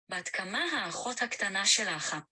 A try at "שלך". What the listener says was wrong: Yeah, it should be just shalach, not shalek. Shalach.